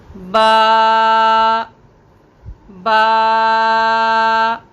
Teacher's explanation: اصول مخارج کا پہلا اصول شفتان، شفتان یعنی ہونٹ، اس میں پہلا حرف جو ہے وہ ہے با، اور اس کا مخرج کیا ہوگا کہ دونوں ہونٹوں کے گیلے حصے ملنے سے ادا ہوتا ہے